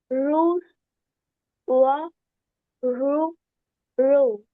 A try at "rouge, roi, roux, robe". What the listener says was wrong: Okay, you're sounding more like the English or R sound. It's going to be rouge, roi, roux, robe. Not rouge, raw, roux, okay? Try to bring it from the back of the throat. Rouge, roi, roux, robe.